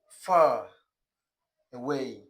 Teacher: the R sound is also pronounced, always pronounced in British English when it comes before a vowel sound.